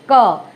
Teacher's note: तो ये जो जीवा का जो पिछला भाग है ये तालु को स्पर्श करता है